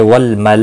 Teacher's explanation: مد متصل ہے، 4 الف کے برابر کھینچ کر پڑھیں گے